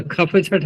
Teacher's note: ख फ छ ठ इनमें वायु तेज निकालनी पड़ती है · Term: महाप्राण